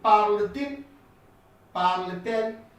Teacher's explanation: We add up a T just because there are two vowels meeting and the sound isn't good.